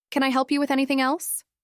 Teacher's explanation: The rise in their voice at the end of questions, a gentle lift, a singong kind of rhythm. · With a warm upward tone, almost like they were smiling through the words. It made the question sound open, inviting, and genuine.